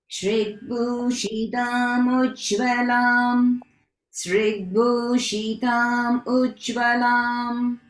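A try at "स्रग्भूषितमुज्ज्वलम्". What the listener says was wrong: So the spelling is, it's actually sra in srag, not srig. Okay, so just want to point out that in case it's a typo in your copy. Sragbhushitamujjvalam. Sragbhushitamujjvalam.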